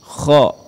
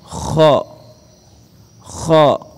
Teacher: Sekarang kita berpindah kepada huruf kha. Huruf kha ya keluar dari tenggorokan yang paling atas. Kha ya itu bunyinya terdengar seperti suara orang yang mengorok saat sedang tidur.